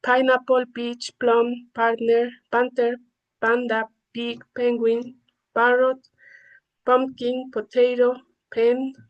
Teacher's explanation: P is aspirated when it appears at the beginning of a stressed syllable.